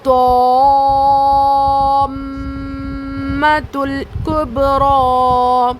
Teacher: تو پڑھ کے پھر اس کے بعد میم پہ رکنا ہے، میم پہ غنہ کرنا ہے. میم پہ تشدید ہے نا تو میم اور نون پر تشدید آئے گا تو وہ غنہ ہوگا